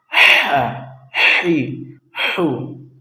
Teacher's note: ہا حلق کے درمیانی حصے سے